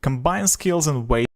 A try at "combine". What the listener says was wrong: Combine, not combined, but combine. Combine